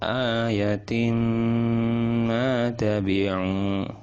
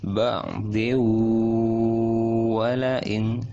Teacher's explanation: memasukkan tanwin itu kepada mim dan didengungkan, dipanjangkan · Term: idgham bi gunnah